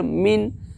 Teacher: اظہار حلقی کو ظاہر کر کے بلا گنہ کے جلد پڑھیں گے